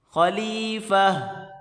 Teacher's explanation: گولتا کو وقف کی صورت میں ہاں میں کنورٹ کر دیں گے. وقف کی صورت میں خلیفہ.